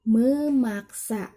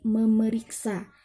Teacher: konsonan P diluluhkan dengan nasal em